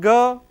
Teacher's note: It is voiced velar plosive